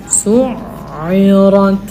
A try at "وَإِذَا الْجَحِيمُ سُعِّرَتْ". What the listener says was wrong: Ada masuk hidung tu. Su'irat. Huruf ain kat sini. Huruf ain bukan hidung.